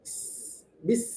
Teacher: Ketika membaca sukun, huruf sin harus mengalir sedikit udara